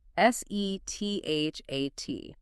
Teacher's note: And as the source material points out, this sequence is a fantastic regional focus exercise because all 5 sounds primarily use the front of the tongue